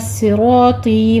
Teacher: وَأَنَّ میں غنّ واجبہ کریں گے, ہاذا نہیں کہنا, آگے آپ نے ہاذا فتح قائمہ اور الف مدہ کو برابر رکھنا ہے, 2 کاؤنٹ کرنا ہے. صراطی میں صاد بھی پر ہے, را بھی پر ہے, اور طا بھی پر ہے, را اور طی, یہاں پہ الف مدہ یا مدہ ہے, 2 کاؤنٹ کریں گے.